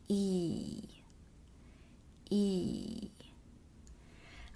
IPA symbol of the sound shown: i: